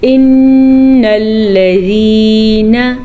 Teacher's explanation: نون کا غنہ ادا کر لیں. نون کے اوپر زبر ہے. زبر کو کھینچنے کی غلطی مت کیجیے گا